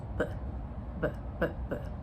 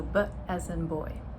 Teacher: So the voiced billeial sound that I will begin with is bbb.